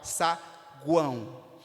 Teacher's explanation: o U e o O representam semivogais, enquanto que o A é a vogal mais forte e é vista como a vogal, saguão. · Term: tritongo